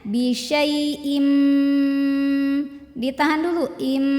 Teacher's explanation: kalau ketemunya sama mim bunyinya jadi masuk ke mim yang n-nya hilangin jadi leburin ya leburkan dengan mim jadi ini bunyinya Bim ditahan dulu Im [Musik] Bim kemudian kalau